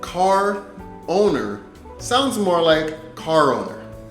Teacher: can you hear how those R and those vowel sounds are starting to run together